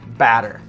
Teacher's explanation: Americans like to make our T sounds like bottle, water, D's